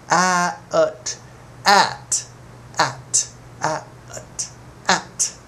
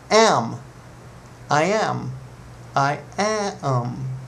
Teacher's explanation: one vowel but it's actually kind of a double vowel sound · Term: a sounds